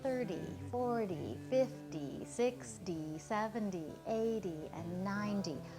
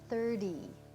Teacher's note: we say them as if they end with a d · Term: the flap